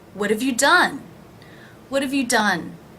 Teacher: the H is dropped in have, and the vowel is actually reduced from a to the schwa of.